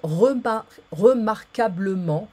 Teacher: remember the QU is a K sound, not quo